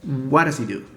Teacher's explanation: We drop that H consonant and it's just E. And that Z sound links with E.